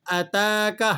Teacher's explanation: آپ نے اتاک حمزہ کو نہیں کھینچنا، تا پر کھڑا زبر ہے، اور کھڑا زبر کھڑی زیر الٹے پیش کا یہ قاعدہ ہے کہ آپ نے اسے ایک الف تک کھینچنا ہوتا ہے۔